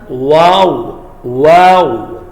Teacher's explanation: دونوں ہونٹوں سے ادا ہوگا لیکن دونوں ہونٹوں کو گول کریں گے